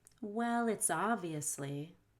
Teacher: link together consonant to vowel so you'll end up saying lit's